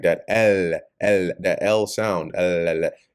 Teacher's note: that L sound L your tongue has to actually touch the roof of your mouth